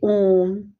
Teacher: प्लुत स्वर जिन स्वरों के उच्चारण में ह्रस्व स्वर से तिगुना समय लगे उन्हें प्लुत स्वर कहते हैं, जैसे ओम। प्लुत स्वर एक ही है, इसका चिन्ह एस है।